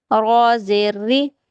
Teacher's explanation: را کے نیچے اگر زیر آتی ہے نا تو را کو باریک پڑھیں گے